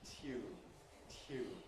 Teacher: In the case of tune, the aspiration happens during the yod, tune, tune, which of course is why it's easier for it then to become tune in some people's speech. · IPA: [tj̊uːn]